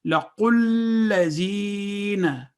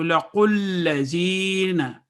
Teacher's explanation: آپ نے دیکھا کہ یہ کیونکہ مشدد ہے تو 2 سیکنڈز والا رول، اس کو تشدید کے ساتھ پڑھا ہم نے، اور درمیان کے دونوں الف ہم نے ادا نہیں کیے، بلکہ واو، الف اور الف یہ 3 حروف جو ہیں ہم نے ادا نہیں کیے اس میں. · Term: وصل